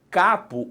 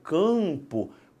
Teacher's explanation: cabo o ar sai inteirinho pela boca quando eu falo campo parte do ar vai para o nariz por quê Porque a sua língua sob um cadinho e empurra